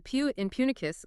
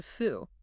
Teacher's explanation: the P in Punicus loses its pressure and shifts to Fu